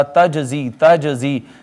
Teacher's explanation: قطب جدن میں سے جیم ہے ساکن آئی ہے، ہم نے اس پہ قلقلہ کیا